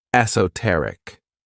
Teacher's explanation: the stress is on that third syllable, esoteric